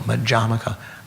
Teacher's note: if you refer to the system, it's Madhyamaka, the emphasis on the second syllable